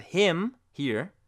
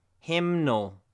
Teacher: when we change the word hymn to hymnal, the N has a sound again.